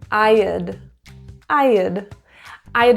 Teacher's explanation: I'm linking I and uh together there's no pausing